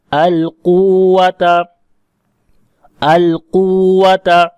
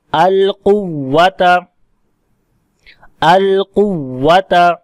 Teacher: تو یہاں پر کیونکہ ادغام ہو گیا تو اب مد یہاں نہیں کریں گے، اور پھر اس واو کے اوپر شد کو واضح کرنے کے لیے ہم یہاں پر نبر کریں گے، آواز واو کی اونچی کریں گے۔ تو یہ وہی قاعدہ ہے جو ہم نے اوپر پڑھا کہ جب واو اور یا کے اوپر شد آئے تو اب آواز کریں گے القوۃ، القوۃ۔